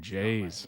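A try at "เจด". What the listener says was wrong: Like in English, no? His name is Jade, so it sounds like a D at the end, alright?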